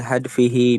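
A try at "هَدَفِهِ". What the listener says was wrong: hadaf, hadaf. Dalnya di fathah. Hadaf. hadafihi. Ya, fasalahu an hadafihi.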